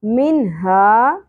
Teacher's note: نون کی اواز کو ظاہر کر کے پڑھنا ہے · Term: اظہار